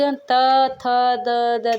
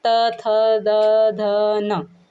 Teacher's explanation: देखो अपनी जीभान पूरी दांत को टच कर रही है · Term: त वर्ग